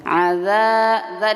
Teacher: disukunkan Aza Za di sini dua harakat ya panjangnya dua harakat Alif didahului dengan fathah panjang dua harakat